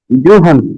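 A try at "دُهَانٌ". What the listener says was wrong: দতটা একটু মোটা হবে। দুহান,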